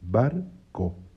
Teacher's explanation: la palabra mamá, en la última sílaba está el acento, esa es tónica. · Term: sílaba tónica